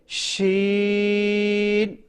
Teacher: और जहां से हमने जीम को अदा किया था शीन को भी वहीं से अदा करेंगे। जबान का सेंटर ऊपर के तालु के साथ मजबूती से लगाकर पढ़ना है।